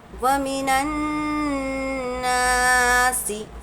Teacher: الف مدہ کو ہم کو ایک الف کے برابر کھینچ کر پڑھنا ہے